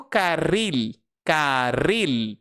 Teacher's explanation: o L em espanhol você faz no céu da boca. Então o L no espanhol jamais terá o som de U. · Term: som do L